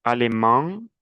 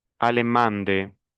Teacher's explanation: El femenino ya no es nasal